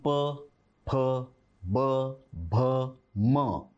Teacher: प, फ, ब, भ, म हे ओठ ओठाला लावून.